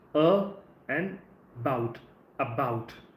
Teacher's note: So you have to put the stress on the second part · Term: word stress